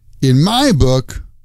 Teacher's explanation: stress is on the word my. In my book, like that.